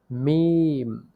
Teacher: দুই ঠোঁটের শুকনা জায়গা হইতে উচ্চারিত হয় মিম দুই ঠোঁটের শুকনা জায়গা হইতে উচ্চারিত হয় মিম দুই ঠোঁট